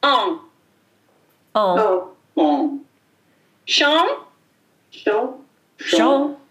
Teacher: A vowel before an N or an M is nasal, and the N or M is silent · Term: nasal vowel